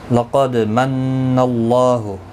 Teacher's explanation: نون مشدد پر غنہ ہوگا، غنہ کے ساتھ پڑھیں گے. اللہ کا لام زبر کی وجہ سے پر پڑھا جائے گا. · لقد من اللہ، قاف حروف مستعلیہ ہے، پر پڑھنا ہے، دال ساکن پر قلقلہ ہوگا.